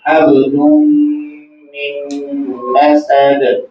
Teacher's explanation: کے بعد میم ہے، یہاں بھی ادغام کا قاعدہ ہوگا، یعنی تنوین اور یہاں نون ساکن دونوں میم میں مدغم کر کے غنہ کر کے پڑھے جائیں گے